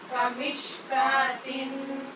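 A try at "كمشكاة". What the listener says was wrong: تن نہیں، اخفا کیجیے، کمشکات،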